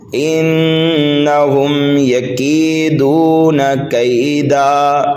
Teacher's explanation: نون مشدد ہے، غنہ کر کے پڑھیں گے